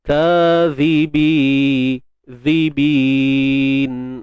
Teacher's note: Zal, keluarkan hujung lidah sikit je.